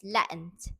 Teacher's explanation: Yes, Latin becomes Latin because the t sound is swallowed and trapped in the throat. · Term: glottalizations